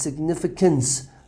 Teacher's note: The stress is on the N, significance, and after the C you have a schwa.